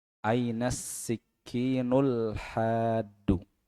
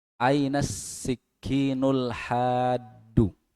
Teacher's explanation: jadi alif lamnya, alnya itu lamnya idgham ke sin. Ainas sikinul hadu gitu.